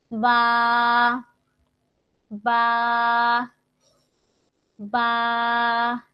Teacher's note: 2 ঠোঁটের ভিজা অংশ হতে উচ্চারিত হয় বা, বা, ভিজা জায়গা থেকে বা, ভিজা ভিজা, 2টা ভিজা লাগবে একসাথে, উপরের ঠোঁটের ভিজা জায়গা, নিচের ঠোঁটের ভিজা জায়গা একসাথে লাগিয়ে দিব।